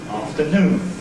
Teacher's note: the last syllable is stressed and we make it louder longer more noticeable than the other two syllables of the word afternoon. That is true when I say that word in isolation with a pause before and a pause afterwards. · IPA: /ˌɑːftəˈnuːn/